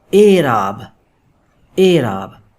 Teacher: یہ جو کسرہ ہے یہ ہے مجہول، جو کہ آواز دے گی اے کی. یہ بن گیا اعراب، اعراب.